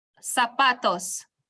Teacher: So it ends with an S. So which syllable will wear the stress? Which syllable are we going to stress? The second to last.